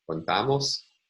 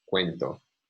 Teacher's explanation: So in these cases, it looks like the stress is responsible for the difference between a monophthong and a falling diphthong